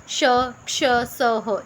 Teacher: गर्म हवा निकलती है, यानी कि एक बिल्कुल ऐसा भाफ जी टाइप की आवाज़ आती होंगी है जिस दे विच हल्की जी सीटी की आवाज़ भी आती है, ठीक है। श, क्ष, स, ह, ये चारों जिहड़े ने ऊष्म व्यंजन ने, तुसीं इन्हां दी उच्चारण भी जिहड़ा कर सकते हो, ठीक है।